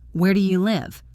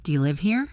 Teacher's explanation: so our voice rises to show uncertainty